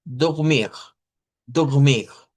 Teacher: el sonido clásico sería con Rs uvulares